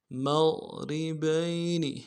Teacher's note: میم کو غین کے ساتھ ملانا ہے، غین میں آواز موٹی ہوگی، موٹا کریں گے